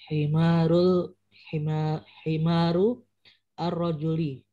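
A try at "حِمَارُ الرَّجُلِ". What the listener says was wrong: Nah, A-nya tidak usah dibaca. Langsung himarur rajuli. Nah, ini perlu dibiasakan ya terkait dengan alif lam. Jadi kalau alif lam di tengah-tengah kalimat atau di akhir itu sudah tidak dibaca lagi alifnya gitu. Himarur rajuli.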